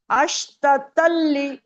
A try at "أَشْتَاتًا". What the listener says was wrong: اشتتلی تا کو کھینچنا ہے، اشتاتل